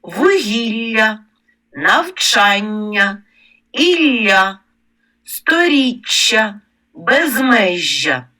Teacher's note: подовжені м'які й пом'якшені приголосні між двома голосними зокрема в іменниках на я позначають двома буквами вугілля навчання Ілля